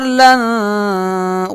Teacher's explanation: غنہ کریں گے، یہ الف نہیں پڑھیں گے